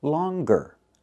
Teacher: But with the word longer, we pronounce the g, longer. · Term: hard g